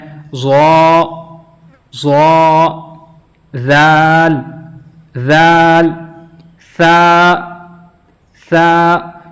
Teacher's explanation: زبان کا سرا جو ہے وہ اوپر کے دانتوں کے اندرونی کنارے کے اوپر مس ہو رہا ہے، لگ رہا ہے۔